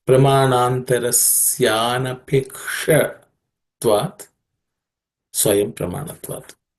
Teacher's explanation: In terms of pronunciation, there are no aspirated consonants in this sutra. The only one which I would point to pay attention is anapekshatva, ksha, that is cerebral ksha.